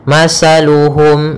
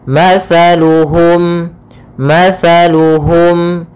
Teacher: makhrajnya yaitu dari ujung lidah kita ujung lidah menempel dengan gigi seri atas sehingga ketika pelafalan tsa Jangan sampai kita melafalkannya dengan masaluhum dengan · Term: huruf tsaa